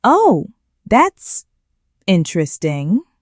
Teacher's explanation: You hear the voice go up on interesting. That high pitch is a signal. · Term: upward inflection